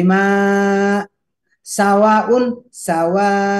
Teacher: Jadi hamzahnya terasa. Tapi tidak juga harus dentak.